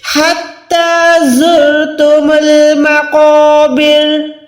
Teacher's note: زا کو ادا کریں تو وسل یعنی سیٹی کی آواز نکالنی ہے